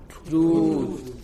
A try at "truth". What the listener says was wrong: It's a very long vowel. It's not truth. It is truth.